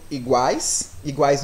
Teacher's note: não tem influência nenhuma do meu nariz eu só precisei utilizar minha boca para falar essa palavra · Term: orais